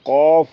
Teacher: جیسے یہ حرف آیا قوف، جس کا مخرج ہے زبان کی جڑ اور تالو کا حصہ، یہ نکلتا ہے قوف، اور یہ موٹا ہے، اور دوسرا کیف وہ باریک ہے۔